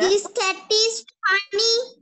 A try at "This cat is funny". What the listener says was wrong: Funny. This cat is funny. Okay. I heard like cunning.